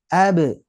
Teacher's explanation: kekuatan pantulan bunyi hampir sama dengan vokalnya artinya saat kita mantul jangan sampai dihilangkan suaranya